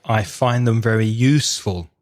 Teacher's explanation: with expressions like i find them very useful you stressed useful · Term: word stress